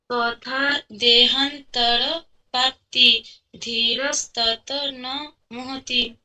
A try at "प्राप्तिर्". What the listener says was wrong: प्राप्तिर, प्राप्ति नहीं, प्राप्तिर, र, प्राप्तिर धीरज तत्